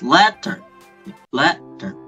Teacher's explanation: trochaic, which has the pattern stressed, then unstressed